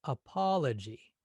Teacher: that second syllable is slightly longer than the first and the third and the fourth